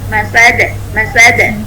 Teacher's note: Ketika condong ke fathah, itu sifat jaharnya masih terjaga.